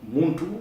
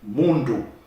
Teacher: the T and the D are the same phoneme, the same sound. In fact, one is deaf and the other is sonorous.